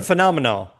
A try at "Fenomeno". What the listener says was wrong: Your brain wants to say phenomenal. This is the Phenomeno. F E N O M E N O.